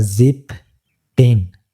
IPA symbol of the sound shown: ɪ